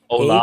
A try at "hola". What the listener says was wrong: Hola. You just leave out the H.